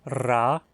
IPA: r